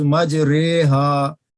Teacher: مجریہا میں الف اور یا کے درمیانی آواز ہے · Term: کھڑا زیر